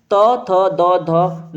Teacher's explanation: त थ द ध न ये क्या है दंत पे आके टच होती है